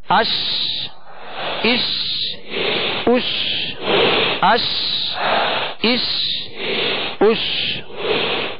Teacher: تو شین کو جب ادا کریں گے تو بیچ زبان، بیچ تالو سے لگے گا تو شین ادا ہوگی، اور شین کی ادائیگی میں آواز منہ میں پھیل جائے گی